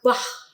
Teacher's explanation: aksara khat itu adalah aksara guttural, yaitu aksara yang diucapkan di tenggorokan ya